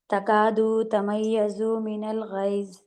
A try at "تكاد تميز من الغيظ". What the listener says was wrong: کھینچنا نہیں، تکاد تمیض من الغیظ